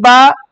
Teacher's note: Huruf ba itu letaknya ada di dua bibir.